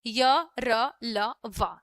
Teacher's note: स्वर और व्यंजन मतलब गले से थोड़ा और जो आप व्यंजन का उच्चारण करते हो उसके बीच में होता है, ठीक है, वे होता है अंतस्थ व्यंजन। इनका उच्चारण करते समय जीभ मुंह से किसी भाग को पूरी तरह टच नहीं करती